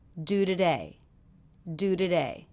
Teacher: the T in today came between a vowel, do, the oo vowel, and the schwa sound. And that's why we made this a flap sound.